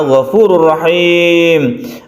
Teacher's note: Ghafurur rahim ada tanwin bertemu dengan ro, idgham bila guna. Idgham artinya masuk, tanwin masuk ke ro, kemudian bila guna tidak berdengung.